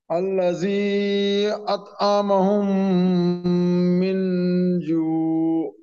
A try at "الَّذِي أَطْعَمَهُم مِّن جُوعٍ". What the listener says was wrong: यहाँ भी आपका जाल नहीं निकल रहा है, इस पे ज्यादा मेहनत कीजिए। जाल पे, ठीक है।